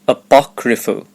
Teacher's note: the stress is on the second syllable